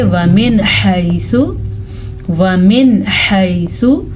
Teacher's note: नून साकिन के बाद हा आ गया है तो नून साकिन को हम ज़ाहिर करके पढ़ेंगे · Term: इजहार